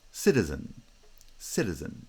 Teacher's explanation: There are two light syllables, cita, cita. Stress is on the first syllable because it's the strong syllable in the foot. And then that post-foot syllable is also unstressed.